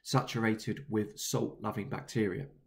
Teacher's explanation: The use of sibilants, the repeated S sounds, gives a calming feel to the phrase